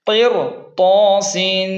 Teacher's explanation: یہاں را کے بعد طا مستعلی ہے، اس لیے را موٹی ہوگی